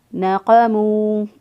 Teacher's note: نقمو، قوف جو ہے اس کو کبے کے پاس سے زبان کی جڑ اوپر کے تالوں کے ساتھ لگائیں گے تو قوف ادا ہوگا۔ وما نقمو، میم پیش واو مو، ایک الف کے برابر اس کو بھی لمبا کریں گے، واو ساکن سے پہلے والے حرف پر پیش ہو تو پھر واو مدہ ہوتا ہے۔